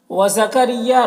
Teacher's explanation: را کو باریک پڑھیں گے، یا میں الف مدہ ہے، ایک الف کے برابر کھینچیں گے۔